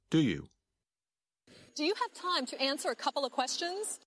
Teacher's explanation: you can still hear each of the three words but the words do you sound like one word